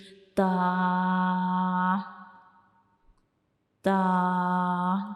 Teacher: जब हम ता को पढ़ते हैं तो हमारी जो जुबान की टिप होती है नोक होती है वो हमारे ऊपर वाले जो दांत होते हैं सामने वाले उनकी अंदर वाली साइड पे जो मसूड़े होते हैं उनको टच करती है। ठीक है?